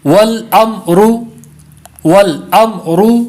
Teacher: وَالْأَمْرُ پڑھیں گے تو میم میں کلکلا ہو جائے گا، تو میم میں کلکلا نہیں کرنا بلکہ میم کو ساکن ہی رکھنا ہے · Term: میم ساکن